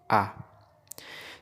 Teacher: vokal Tengah yakni vokal yang dihasilkan oleh gerakan lidah bagian tengah